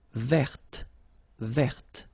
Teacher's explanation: So listen carefully. I don't say te, but it's t.